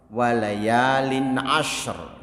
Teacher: Lin'a itu tanwin bertemu ain, itu tidak didengung.